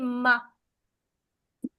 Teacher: दो होठों को आपने जोर से मिलाया, ये दो मखरज है ना उसके, मिला के जैसे ही हटाया तो आवाज निकलती है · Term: तबाउद